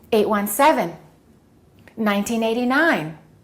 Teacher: when we have two numbers or three numbers or more we stress the last number